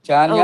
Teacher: చాన్యాహ అని విసర్గలు చెప్పక్కర్లేదమ్మా, చాన్యా అని ఓకే కలిపేయచ్చు. అక్కడ వి వచ్చేప్పటికి కలిసిపోతాయి విసర్గలు.